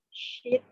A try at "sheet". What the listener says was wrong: Yang panjang. Bisa bahaya itu kalau kamu pendek-pendek. Kalau pendek beda maknanya ya.